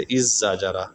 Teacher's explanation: دال کو زا سے بدل کر زا کا زا میں ادغام کرنا